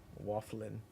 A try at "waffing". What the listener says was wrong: No, there's no L. Waffing.